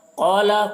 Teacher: قاف حروف مستعلیہ میں سے ہے، قاف کو پر پڑھیں گے